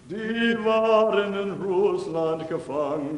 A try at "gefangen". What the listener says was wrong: You said gefangen. You're going to have to really practice to get out of that. Gefangen, not gefangen, no g.